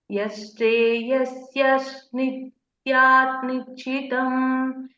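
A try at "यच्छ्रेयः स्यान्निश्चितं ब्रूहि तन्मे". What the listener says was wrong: Instead of syad, you say syan nishchitam. Like what you said in the scripture. Bruhitanme. Yashreyasyan nishchitam bruhitanme.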